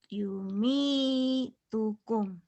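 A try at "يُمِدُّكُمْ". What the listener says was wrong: Bukan gitu Yumi. Tokum bukan. Nyambung Bu. Jangan Yumi tukum.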